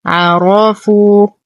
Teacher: نفخم الراء لأنها مفتوحة